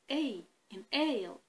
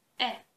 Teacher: while pronouncing a we notice that the articulation changes it gradually glides from e towards e and this is the diphthong so whenever